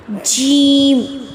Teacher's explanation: وسط کہتے ہیں زبان کے درمیانی حصے کو۔ وسط زبان یعنی کہ زبان کا درمیانی حصہ اور اس کے بالمقابل یعنی کہ اپوزٹ جو اوپر کا تالو ہے اس سے جب زبان کا درمیانی حصہ ٹکرائے گا تو وہاں سے جیم ادا ہوگا۔